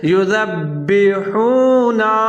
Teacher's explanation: آگے ہے یذبحون، یا کے اوپر پیش ہے، ذال کے اوپر زبر ہے، با کے نیچے زیر ہے اور با کے اوپر تشدید ہے، تو زا اور با دونوں ملا کے پڑھیں گے، مضبوطی کے ساتھ پڑھیں گے، یذبحون، کلکلا کر کے پڑھیں گے۔